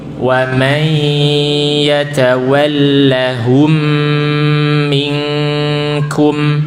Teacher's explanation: idgham bi gunnah, masuk kemudian disertai gunnah, dengung